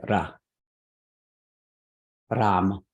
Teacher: The Sanskrit R sounds more like a Spanish R. It's like a trill sound.